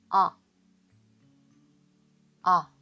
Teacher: 다음으로 오의 기본 음가는 아인데요. 한글 아보다 턱을 더 많이 벌리고 아 하고 소리를 내보세요.